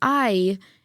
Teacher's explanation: you can hear that both of those start the same. They both start with ah. They're what we call diphthongs. So it basically is two vowels right next to each other.